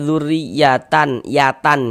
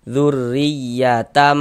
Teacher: Tahu kita begitu cara membacanya dengan cara merubah menjadi huruf mim kemudian didengungkan, dighunahkan. Jadi nih bunyi tanwinnya ini dirubah menjadi huruf mim. Makanya di sini ada dikasih mim kecil kan nih. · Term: iqlab